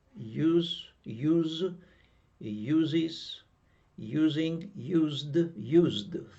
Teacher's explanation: final sound z and e d is pronounced like d